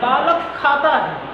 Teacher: बालक के का के बाद खाता का खा अगर कहा जाए तो दोनों के बीच में अर्ध विसर्ग की जो आवाज़ आती है वही ध्वनि, वही आवाज़ जिह्वा मूलीय कही जाती है